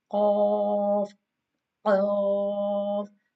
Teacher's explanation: roots of the tongue touching the soft part of the palate